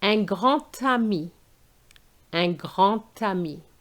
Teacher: There's another absent letter here, the T sound. The D of grand is going to change to a T sound.